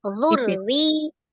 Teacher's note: maka ro yang pertama tebal, kemudian ro yang kedua tipis.